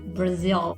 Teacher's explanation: a gente vai falar o Brasil e vai botar a língua lá em cima que nem no l